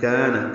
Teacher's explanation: کاف باریک الف مدہ ہے، 2 حرکات لمبا ہے